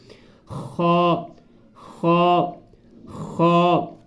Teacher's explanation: یہ اس کو حلق کے نیچے اینڈ والے حصے سے ادا کرنا، آخر والے حصے جو تیسرا حصہ ہوتا ہے